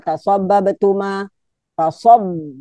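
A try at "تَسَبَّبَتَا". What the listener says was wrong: Tasabbabata. Tanya kurang satu.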